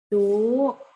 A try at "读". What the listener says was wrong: Jangan ayun, Bu. Kalau ayun nanti jadi nada 3.